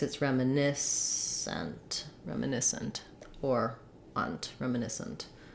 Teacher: Not a reduced vowel in that last syllable.